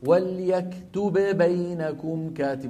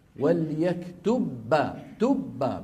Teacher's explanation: بحيث الباء الأولى تدخل في الباء الثانية فيصيران باء واحدة مشددة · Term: الإدغام